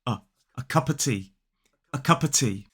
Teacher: we can drop the V when it is followed by a consonant sound